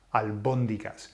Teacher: So where's the emphasis? On the o, albóndigas.